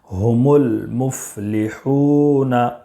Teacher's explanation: اس میں واو مدہ ہے ہا میں، اس لیے اس کو بھی ایک الف کے برابر کھینچ کر پڑھیں گے